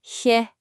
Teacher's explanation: It's a really soft sound, almost like a sigh. Feel that breath coming from the back of your throat.